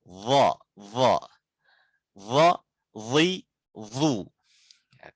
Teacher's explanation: kita mengangkat lidah belakang walaupun gak monyong tapi dia tebal